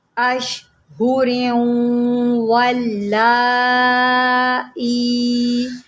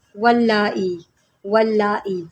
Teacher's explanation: مد متصل کو ہم کھینچ کے پڑھیں گے، کتنا پڑھیں گے، 2 2.5 یا 4 حرکات۔